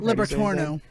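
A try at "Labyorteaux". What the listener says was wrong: Yeah, but Torno. How? There's no N after the end. So it's LabyauX. There's no N anywhere in it.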